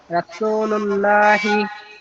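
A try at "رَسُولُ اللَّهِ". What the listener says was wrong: লা তো আপনার পাতলা হয়ে যাচ্ছে। রাসূলুল্লাহি, ল, ল এরম মোটা করে বলতে হবে।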